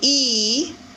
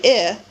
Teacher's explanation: you feel a certain amount of tension when you say E and less tension when you relax a little bit and say I